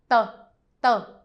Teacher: Try to cut off the wind. Sounds like it's between the T and the D.